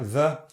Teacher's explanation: Now we're doing a dental fricative there